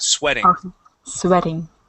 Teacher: We can actually uh take that T and turn it to a D. And instead of saying sweating, it is sw with a short e sound.